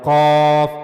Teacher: काफ मुंह के ऊपर वाले नरम हिस्से यानी जो नरम तालू है वहां से काफ को अदा किया जाएगा। काफ और हमने यह भी पढ़ा कि काफ पुर पढ़े जाने वाले हुरूफ में से है। · اس کے بعد قاف کے بارے میں ہم نے پڑھا کہ قاف منہ کے اوپر والے نرم حصے، یعنی جو نرم تالو ہے وہاں سے قاف کو ادا کیا جائے گا، قاف۔ اور ہم نے یہ بھی پڑھا کہ قاف پر پڑھے جانے والے حروف میں سے ہے، لہذا اس کو ہمیشہ پر پڑھا جائے گا، موٹا کر کے پڑھا جائے گا، قاف۔